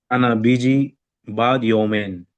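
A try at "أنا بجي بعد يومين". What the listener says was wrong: बाद नहीं, लफ्ज बाद है, ऐन के साथ हमने बोलना है, बाद, यही तो चीजें हमने सीखनी है। यू have to speak clearly. अपनी प्रोनाउंसिएशन आपकी क्लियर होनी चाहिए। अना बीजी बाद योमेन, बाद योमेन, ऐन को कोशिश करें आप गले से निकालने की। बाद योमेन, अभी स्टार्टिंग में थोड़ा होगा लेकिन बाद में आप सीख जाएंगे।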